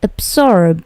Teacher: Perhatikan bunyi B-nya itu memantul sedikit. Absorb. Bunyi B ini biasanya memantul jika dia berdiri sendiri.